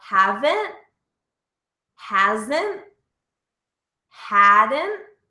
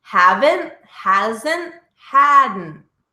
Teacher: Noticing that ending T is never pronounced.